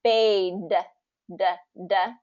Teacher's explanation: the tongue is going behind your teeth for the D sound